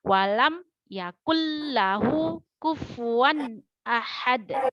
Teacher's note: Ya, karena dia kan fa seperti F. Nanti kalau dia nggak jelas fa, dia macam jatuhnya seperti P tipis begitu